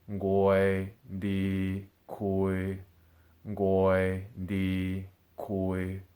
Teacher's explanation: of the middle tone are koi di koi so notice how my voice it's level flat and steady and it's at a comfortable part of my range right in the middle